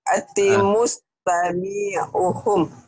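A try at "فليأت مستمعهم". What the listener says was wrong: pendek semua. Mustami'uhum, mustami'uhum. Jadi kalau ada huruf mati nyamber. Fal ya'ti mustami'uhum. Mustami'uhum, mustami'uhum. Fal ya'ti mustami'uhum. Fal ya'ti mustami'uhum.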